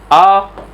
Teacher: तो आ स्वर के उच्चारण में मुख सबसे ज्यादा खुलता है, इस वजह से उसे हम बोलते हैं विवृत स्वर।